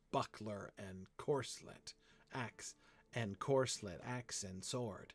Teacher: Buckler is the only word in the entire poem which is not iambic. because it has a stress on the first syllable.